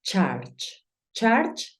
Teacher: Claro está que yo estoy haciendo el sonido de la u como una a Pero recuerda que es la intención es como si dijeses una